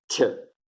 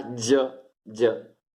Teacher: Quindi la C è una affricata, si chiama affricata postalveolare, vabbè, insomma, affricata sorda, C, e affricata sonora, G